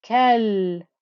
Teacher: you can hear the noise flowing through the lam with the sukoon.